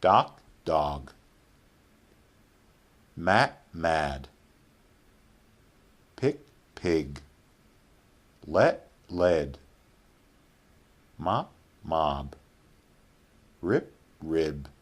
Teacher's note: the first word has a normal vowel, the second word has a lengthened vowel, and it's lengthened because each second word ends with b, d, or g